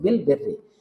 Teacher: বিল বেররি, বিল বের, র তাসদীদ আগে জের, আবার রতে জের, তাহলে র দুইবারই পাতলা হচ্ছে, বিল বেররি। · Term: র পাতলা